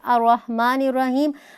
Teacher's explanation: الرحمن کے الف کے اوپر ہم حرکت داخل کریں گے، وہ حرکت جو ہم زبر کی حرکت داخل کریں گے وہ عارضی ہوگی، اور اس کو عارضی حرکت کہا جاتا ہے۔